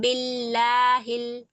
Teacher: बिल्लाहिल में लाम को बारीक पढ़ेंगे क्योंकि जेर आ रहा है